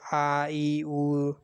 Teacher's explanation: ये हमारे अल्प प्राण होते हैं, और अल्प प्राण के साथ ही में ये हमारे घोष होते हैं